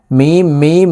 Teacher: ওয়ালা মিমের সাথে নাকের বাঁশি থেকে গুন্না করে পড়বো